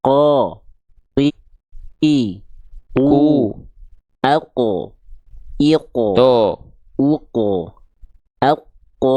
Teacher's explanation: pertama makrnya menempel ke Pangkal lidahnya naik nempel ke langit-langit lunak ketika vokal a-nya keluar pangkal lidahnya tetap nongkrong di atas · pangkal lidahnya naik tetap naik makanya keluarnya vokal o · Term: huruf tebal